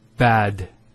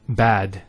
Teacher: Notice the elongation of the a sound. We don't say bad, we say bad.